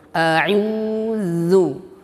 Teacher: ain di sini makhrajnya tidaklah dari hidung, maka jangan jangan dikeluarkan dari hidung, tapi keluarkan dari tengah tenggorokan sampai keluar dari rongga mulut.